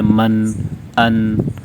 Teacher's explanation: اور غنہ کہتے ہیں کہ نون کو ادا کرتے ہوئے آواز ناک میں لے کر جائیں گے اور ایک الف کے برابر کھینچیں گے